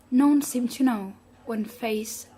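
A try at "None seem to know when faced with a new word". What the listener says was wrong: Okay, give me a bit more commas, okay? A breath, a space, something slightly different, so you can go quite quickly or dynamically up to the comma. When you hit the comma, you pause, then you can restart, okay?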